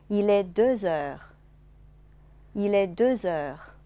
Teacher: De▁后面的▁x▁啊，原来不发音。但是要和后面的元音连起来读啊，叫做连诵。Deux▁heures▁发成▁z▁音啊。